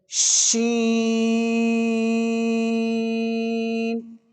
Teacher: اس کے بعد آتی ہے شین، یہ منہ کے سارے حصے میں، اندر والے حصے میں اس کی آواز پھیل جاتی ہے، اس کو تفشی کہتے ہیں، یعنی افش سے پھیلانا۔ یہ شین کو ادا کرتے ہوئے آواز پورے منہ میں پھیل جائے گی